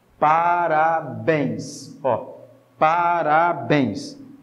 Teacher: parabéns a sílaba tônica é a última